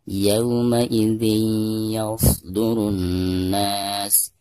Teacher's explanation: Maka cara membaca tanwin yang ada di bawah zal tersebut itu harus diidghamkan langsung ke huruf ya yang ada di depannya ya, disertai dengan gunah. Yauma idzin yasdurun nas, dari ru langsung ditasdidkan disertai dengan gunah kena ya. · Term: idgham bigunah